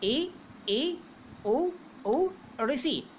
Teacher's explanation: मुख द्वार यानी मुंह सकरा हो जाता है, सकरा यानी छोटा हो जाता है। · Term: समृद्ध स्वर